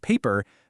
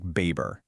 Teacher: the students in the study replace that P sound with a B sound · 2/3 of the students in the study replaced that p sound with a b sound. And this happens because certain sounds in English just don't really exist in the same way in Arabic, which leads to this super common substitution.